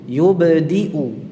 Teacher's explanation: ini qalqalahnya yub sendiri, tidak condong ke kasrah. Yube tidak.